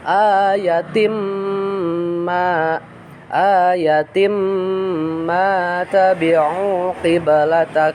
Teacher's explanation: Nah, awalnya ayatin harusnya ya, tanwin ayatin, karena kedepannya ada huruf mim ya, kedepannya ada huruf mim, maka diidghamkan ya, atau dimasukkan ke dalam mim. Jadi si tanwinnya tidak dibaca.